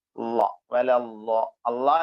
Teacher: അള്ളാ എന്ന് പറയുമ്പോൾ നമ്മുടെ നാവിന്റെ തലപ്പു ഭാഗം പിന്നെ മോണയിൽ ടച്ച് ചെയ്യുമ്പോഴാണ് ള വരുന്നത്